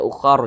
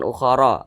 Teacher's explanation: kalau berwaqaf kita baca ukhar, jangan ukhara